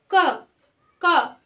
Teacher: इसमें कितनी कम हवा निकल रही है, निकल रही है ना, एकदम थोड़ी सी। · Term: अल्प प्राण